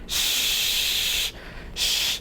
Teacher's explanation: Your tongue tip doesn't touch anything in the mouth when you do this.